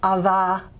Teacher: It's voiced, but it's not properly fricated. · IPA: ⱱ